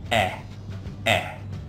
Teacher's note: in English it's a little bit lower and the tongue is very relaxed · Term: short sound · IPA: /e/